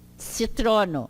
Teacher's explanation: esse C não tem acento, mas ele tem essa pronúncia do tse